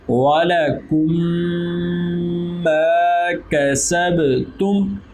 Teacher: میم ساکن کے بعد میم آ گئی تو ادغام شفوی ہو گیا · یہ با حروف کلکلا میں سے ہے اس لیے یہاں پر کلکلا ہوگا. اور میم پر بھی جزم ہے لیکن میم حروف کلکلا میں سے نہیں ہے اس لیے یہاں پر میم پر کسی قسم کا کلکلا نہیں ہوگا